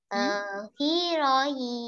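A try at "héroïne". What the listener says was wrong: No. H will be silent. What I told you. These two words, air and heroine. I am not pronouncing H. I am not pronouncing H there. In French, if your word is beginning with letter H, then H will be silent. If we are, the word is beginning with letter H, then letter H will be silent.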